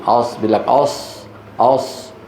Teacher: ضم الشفتين عند نطق الصاد هذا موجود موجود عند بعض المقرئين وهذا خلل داخل على التلاوه